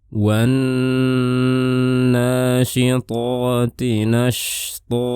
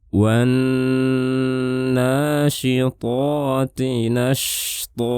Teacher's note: Dan nanti jangan lupa di sini terdapat huruf shin sukun. Shin ini salah satu sifatnya adalah rokhawah. Jadi saat melafalkan shin, suaranya kita tahan baru pindah ke huruf to.